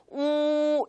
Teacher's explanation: 자, 두 번째, 우라고 할 때는 조금 주의해야 하는 것이 우리말에도 물론 우라는 발음이 있지만 우리말과 조금 다르게 입 모양이 굉장히 동그랗고 앞으로 많이 나와야지만 중국어의 정확한 우 발음을 할 수가 있습니다. 그래서 그냥 우 하는 것이 아니라 우 이렇게 입 모양을 최대한 앞으로 빼서 발음할 수 있게끔 주의해 주시고요.